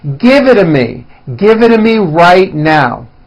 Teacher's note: the only big change comes from the t's being pronounced as D's and this happens because the T's fall between two vowel sounds